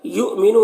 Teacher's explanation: یہاں پر حمزہ ساکنہ ہے تو جھٹکا لگے گا